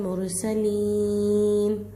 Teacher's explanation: राय साकिना से पहले पेश आकर है रापुर होगी। सीन का आवाज़ ले लेकर आना है, यहाँ स्वात नहीं निकल जाए, मद्दा है थोड़ा खींच कर ठहराना है।